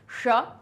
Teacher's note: जब इस श को बोले तब हम अपनी जीभ को पलट लें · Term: मूर्धन्य श